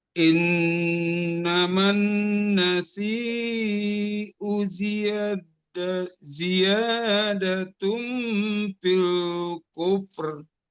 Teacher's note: Di u nggak dipanjangkan, di si-nya aja yang dipanjangkan.